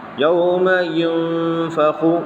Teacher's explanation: اظہار کا قاعدہ یہاں پر چسپا نہیں کر سکتے آپ، یہاں اخفا کا قاعدہ آتا ہے. تو آپ کو نون کی آواز، نون کا جو تلفظ ہے اس کو ناک میں چھپا کر کے پڑھنا ہوگا. یوم ینفخ، اور ایک الف کی مقدار دبا کے پڑھیں گے.